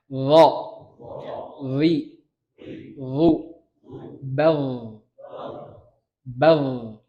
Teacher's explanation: Antum kalau ngomong dhodhif, lidahnya di tempat yang sama. Bedanya, kalau dho itu mengkerucut. Lidahnya mengkerucut.